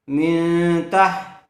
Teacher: نون ساکن کے بعد تا آیا ہوا ہے اس لیے غننے کے ساتھ اخفا ہوگا